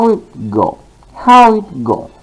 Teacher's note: we can use the uh the falling pattern of intonation from high level to low level